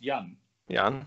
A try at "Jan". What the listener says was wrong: No. Not Jan. Not a long A. Short A. Jan.